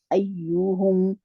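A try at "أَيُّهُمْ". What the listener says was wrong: ایہم. نہیں، یوں نہیں ہے نا میری بہن، آپ بہت کھینچ رہے ہیں اس کو. ایہم.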